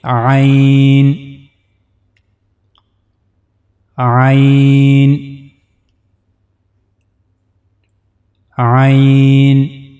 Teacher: So for pronouncing Ain, we have to use the middle part of the throat. Ain. This is the middle part of the throat.